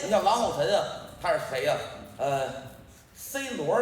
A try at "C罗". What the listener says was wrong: 您 这 发 音 不 太 标 准 。C ▁罗 。 这 儿 化 音 不 能 瞎 加 啊 ▁！C ▁罗 听 着 像 个 海 产 品 。